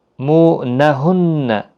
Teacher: مو نہن نون مشدد پر غنہ ہوگا